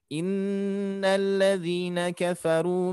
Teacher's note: Nun bertasydid harus kita tahan dengungkan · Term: nun bertasdid